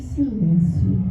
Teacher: Gosto do som sibilante, som contínuo, suave